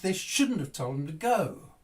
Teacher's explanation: the told bit was less important they they they didn't stress it very much so it got kind of lost